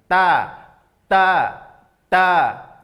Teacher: Ya, makhraj 3 huruf ini adalah ujung lidah, ya, tarful lisan ila usul as-sana al-ulya. Ujung lidah tempelkan ke tempat pertama tumbuh gigi seri atas. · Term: huruf ta